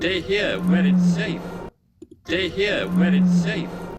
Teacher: So in Cambridge Dictionary, it's the transcription includes this tiny R sound, which means that there is some kind of a coloring of the vowel, but it's just here. The pronunciation of this actor, Ian McDiarmid, is just here without any R.